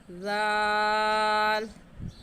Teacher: ज़बान की नोक दोनों दांतों के दरमियान में लाने से ज़ाल निकलता है।